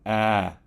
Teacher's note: The short A produces an ah sound. So your mouth needs to be open, a lot more open than you would producing any of the Vietnamese vowel sounds.